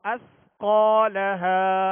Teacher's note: سا کو نرمی سے پڑھنا ہے، سیٹی کی آواز پیدا نہ ہو